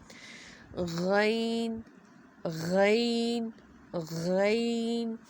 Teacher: غین اور خا کا مخرج سیم ہے، حلق کے اوپر والے حصے سے ادا ہوگا، اور مخرج فرسٹ اینڈ سیکنڈ ہم نے یہ دیکھنا ہے کہ ہماری زبان کی جو جڑ ہے وہ اوپر کی طرف اٹھی ہوئی، یہاں پہ آپ دیکھ سکتے ہیں۔